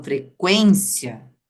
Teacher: a gente tem o som que sai pelo nariz por causa do n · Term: som nasal